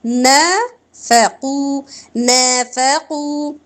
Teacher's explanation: نافقوا، نا الف مدہ، ف زبر ہے، لمبا نہیں کریں گے، قو واو مدہ، ٹھیک ہے، اس کی نارمل مقدار رکھا کریں، حرکت سے تھوڑا سا زیادہ ہوتا ہے